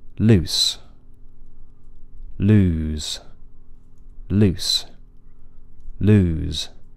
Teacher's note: lose had a longer vowel